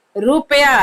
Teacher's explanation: देखो ज्यादा उसमें 2 मात्रा का उच्चारण हो रहा है, ज्यादा दे रहे हैं ना जोर, तो बड़ा उ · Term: दीर्घ उकार